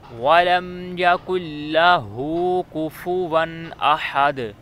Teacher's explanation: اب یَكُنْ لَهُ کا جو ہا ہے یہ ایسے ہی سینے کے ادھر سے آ گیا، اور جو ہا ہے احد کا وہ درمیان سے۔